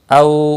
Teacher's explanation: واولین ہے، تھوڑا نرمی کے ساتھ کھینچ کر ادا کریں گے